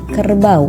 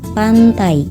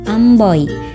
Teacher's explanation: gabungan dua bunyi vokal yang diucapkan dalam satu suku kata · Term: diftong